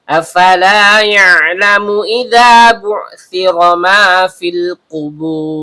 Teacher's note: Hamzah berbentuk alif atau hamzah qot keluar dari tenggorokan bagian bawah. Fa huruf bibir yaitu perut bibir bawah bertemu dengan ujung gigi seri atas.